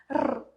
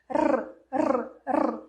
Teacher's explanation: Sempre treina, porque a língua ela realmente vibra, por isso que chama R vibrante. Ela vibra no céu da boca, encosta no céu da boca e volta.